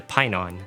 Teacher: is not actually pronounced like an F sound but an aspirated P sound. So yes, his name in ancient Greek is actually closer to pineon.